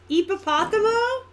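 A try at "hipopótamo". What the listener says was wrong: The H is silent.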